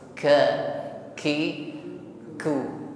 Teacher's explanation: Kaf ini memiliki sifat Hamas jadi pengucapannya tercampur dengan nafas yang ber hembus